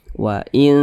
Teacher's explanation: didengungkan jadi suaranya itu kita tahan kita panjangkan sejenak panjangnya dengung atau gunna itu kira-kira dua ketukan dua harakat atau kira-kira dua ketukan dua harakat itu untuk lebih